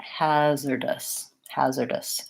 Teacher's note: this final syllable has the vowel schwa, so it's long, short, short.